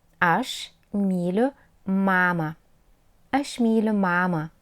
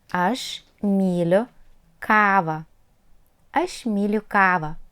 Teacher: Long vowel sound A and A nosinė are pronounced exactly the same way.